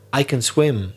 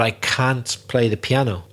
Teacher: If it's negative, people will stress the word can't a bit more.